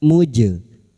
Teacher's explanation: huruf jim yang mati asli di dalam kalimat qalqalah sugro, jangan lupa dipantulkan